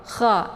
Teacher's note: Kha sejajar dengan huruf gha ya. Kha jadi ditekan, ada anginnya, ada hamasnya.